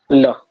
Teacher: जीभ के पार्श्व भाग से निकलता है ल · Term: पार्श्विक